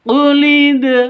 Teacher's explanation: Untuk dibaca qalqalah di sini harus dipantulkan ke dalnya. Dal huruf qalqalah jika sukun, syaratnya harus sukun.